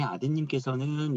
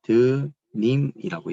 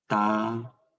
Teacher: 따님이라고 해서 리을이 없어지는 현상. 이때를 리을 탈락이라고 해요. 원래는 있었는데 없어지는 현상.